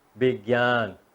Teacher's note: लेख्दा वी भनेर लेख्छौं तर यसको उच्चारण बी हुन्छ